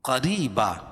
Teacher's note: करीबा, क़ाफ को मोटा पढ़ेंगे और या साकिन से पहले ज़ेर हो तो या मद्दा उसको एक अलिफ के बराबर खींच के पढ़ेंगे, और रा के नीचे ज़ेर है तो रा बारीक होगी। और दो ज़बर की तरवीन पर वक्फ़ की सूरत में एक ज़बर के कायम मुकाम अलिफ को पढ़ेंगे और दूसरी ज़बर अपनी हरकत पर बाकी रहेगी।